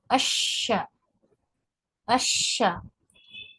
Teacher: ये सिफत तफशी के साथ, यानी इसका जो शोर है वो मुंह में सुनाई दे